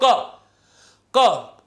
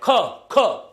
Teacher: ख में ज्यादा वायु आ रही है। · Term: महाप्राण